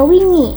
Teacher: wingi menunjukkan kecenderungan bahasa Jawa untuk menghindari vokal pepet